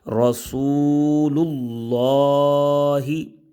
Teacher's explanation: اب لام پیش لام لام کھڑی زبر لا۔ اب لفظ اللہ کا جو لام ہے اس سے پہلے والے حرف پر پیش آ گئی، اس وجہ سے لفظ اللہ کے لام کو پر پڑھ رہے ہیں